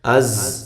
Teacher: زا کو زور کے ساتھ سیٹی کے ساتھ